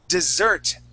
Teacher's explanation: That word is dessert, okay, with the accent at the end